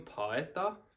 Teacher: So sometimes it's kind of easier to tell, like for instance, this word paeta. Since these vowels don't really go together and make one sound, there's kind of a pause between them